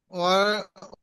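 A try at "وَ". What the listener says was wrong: ও টান দিচ্ছেন কেন? ও জবর ওয়া। ও টান হবে না। ও জবর ওয়া। ওয়াও জবর ওয়া।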